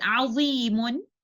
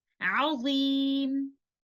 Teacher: And the first one is when we are stopping on a word that ends with a dhammatain or kasratain, then upon stopping, the noon sakina that is hidden in tanween is dropped in pronunciation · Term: waqf bil hazaf